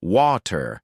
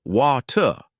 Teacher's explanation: in American English, you'll hear something like water with a strong R at the end.